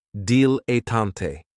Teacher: this word has 3 syllables, and there's kind of like a stress on that first and last syllable, dilettante.